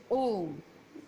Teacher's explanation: प्लुत स्वर के उच्चारण में ह्रस्व से तिगुना समय लगता है